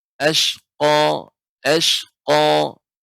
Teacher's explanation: huruf qaf ini termasuk huruf isti'la, sehingga ketika kita membacanya benar-benar kita tinggikan suara, naikkan suara kita ke langit-langit.